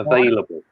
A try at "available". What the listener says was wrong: Can you get the V, the V, yeah, V.